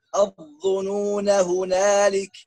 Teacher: Kalau sambungnya alif hilang. Kalau waqaf alif ada.